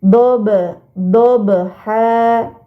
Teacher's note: termasuk huruf qalqala Wal waladiyati Kemudian pada kata dobha terdapat huruf ba sukun Nah ini baru dinamakan Qalqalah maka harus dibacanya memantul